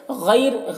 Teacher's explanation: غین کو پر پڑھنا ہے، حروف مستعلیہ میں سے ہے